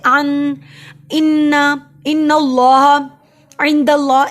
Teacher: غنہ ہوتا ہے نون ناک میں آواز لے کے جانے کو